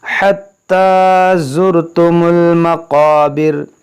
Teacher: क़ाफ मोटा पढ़ेंगे, हुर्फ़ मुश्तालिया है